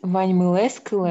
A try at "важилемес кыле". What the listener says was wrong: Важилемес, не съедай слоги. Важилемес кыле.